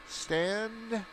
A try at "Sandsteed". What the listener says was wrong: It's just a sand, not Sandsteed. Take the T out of that.